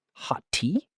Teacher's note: Hot tea can sound like ho tea, with only one T sound.